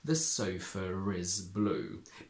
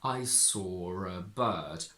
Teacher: So if I want to say that sofa is blue, since my brain is picturing an R before is, we can connect sofa and is with a little R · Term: intrusive R